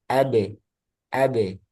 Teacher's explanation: Kemudian ketika sukun dipantulkan ab enggak perlu ditahan ab.